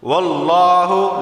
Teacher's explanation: لفظ اللہ سے پہلے زبر ہے تو لفظ اللہ کو موٹا پڑھا جائے گا